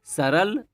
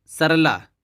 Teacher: तो इसमें टाइम लगा सरल सरला देखिए सरल सरला टाइम लगा ला में डबल टाइम इसका लग रहा है यानी बड़ा का मात्रा लग रही है